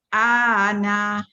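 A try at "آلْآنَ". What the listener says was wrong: Okey, itu tak panjang. Terheret terus. Al-ana. Oh, panjang tu. Dia tak panjang. Tashil tak panjang.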